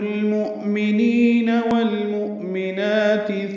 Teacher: حمزہ ساکن ہے، جھٹکے سے پڑھا جاتا ہے روایت حفص میں